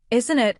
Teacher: Isn't it? often sounds almost like one word when spoken naturally.